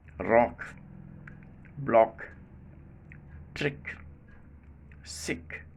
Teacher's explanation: the back of the tongue still remains in contact with the velum and not released immediately, hence the final k sound is not made plosive